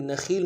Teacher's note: تشدید زور دیں گے۔ خا کو یا کے ساتھ ملانا ہے، خا کو موٹا ادا کرتے ہوئے یا کے ساتھ ملائیں گے ، یا مدہ ایک الف میں کھینچیں گے، لام کی تنوین